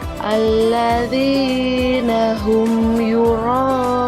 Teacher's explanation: mim sukun bertemu dengan huruf ya dibacanya jelas di bibir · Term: Izhar Syafawi